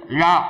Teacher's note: நாக்குடைய இரு பக்கங்கள் தடித்து மேற்பற்களின் அடியை தொடுதல்